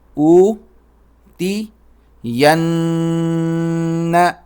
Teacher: نون پر تشدید ہے تو اس پر غنہ کریں گے، ناک میں آواز پیدا کریں گے